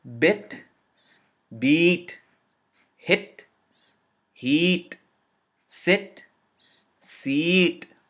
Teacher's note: well the Bhavna with the long vowel and the sound changes the sound changes from just a small movement to a double or a longer movement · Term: longer vowel